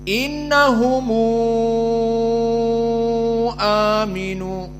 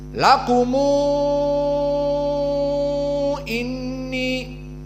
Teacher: Jika mim al-jama' bertemu dengan hamzah, maka usul dari qiraah Warsh dijadikan dhammah dan dibaca panjang al-isba' jika bertemu dengan hamzah. Seperti contohnya innahum, mim jamak nih, bertemu dengan aminu, maka dibaca innahumu aminu misalnya.